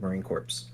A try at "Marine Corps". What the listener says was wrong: Did you say corpse? Okay, it's core. It's just core. It's just core.